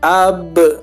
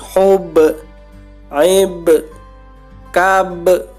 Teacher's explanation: Ada alif ya, kemudian diikuti ba, ba-nya mati. Qalqalah memantul.